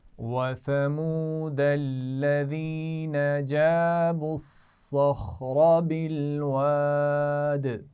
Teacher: بالواد آخر میں دال پر پھر قلقلہ ہو رہا ہے